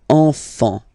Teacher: Don't pronounce the T, you don't pronounce the S, enfant